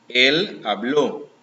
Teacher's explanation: So you stretch out the O at the end